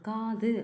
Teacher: கா அப்படின்றது நெடில் து அப்படின்றது குறில்